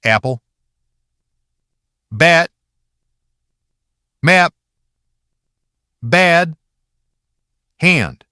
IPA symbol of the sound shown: æ